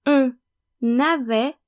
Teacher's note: you need to pronounce the N of on and the S of nous, vous, il, and elle, because when conjugated, the verb avoir starts with a vowel, so we need to make the liaison